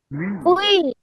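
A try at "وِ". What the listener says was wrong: তাহলে আপনি উচ্চারণ করতেছেন ভি, কিন্তু উচ্চারণ পড়ার সময় উ পড়েন কেন? উই না, ভি ভি।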